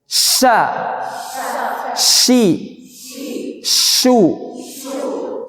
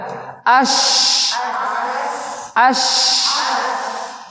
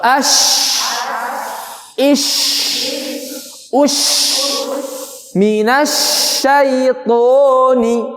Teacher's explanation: shin ini adalah keluar dari tengah lisan yang nempel ke langit-langit keras. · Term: huruf shin